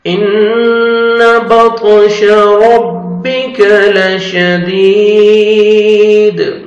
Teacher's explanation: پہلے کسر ہے، دال کو اپنے 1 سیکنڈ کھینچنا ہے، اور وقف کی صورت میں جب سٹاپ کریں گے دال ساکن ہو جائے گا تو قلقلہ کریں گے ، حروف قلقلہ میں سے ہے دال، ان بطش ربک لشدید۔